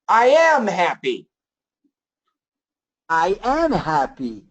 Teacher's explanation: when we keep the be verb separate, we need to emphasize, I am happy.